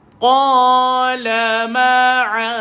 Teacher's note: hujung lidah pada zal disentuh bawah gigi atas